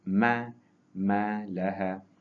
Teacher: tempat mim, iaitu di syafatai, di bibir, tetapi tempat yang kering